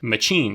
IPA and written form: mə.t͡ʃiːn (machine)